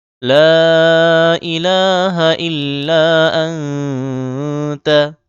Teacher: লাতে ৩ আলিফ টান দিতে হবে।